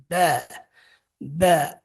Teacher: Huruf ba keluar dari 2 bibir. Bagaimana cara mengucapkannya? Pertemukan saja 2 bibirnya, ditekan, lepaskan ba. Ba, persis seperti mengucapkan huruf B dalam bahasa Indonesia.